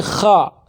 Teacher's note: Kha itu makhrajnya juga dari ujung kerongkongan. Kha bukan monyong kho, tapi kha tetap kebuka, hanya dia fathah saja.